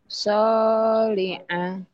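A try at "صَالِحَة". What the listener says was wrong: Soliha itu ha ya, bukan a. Soliha.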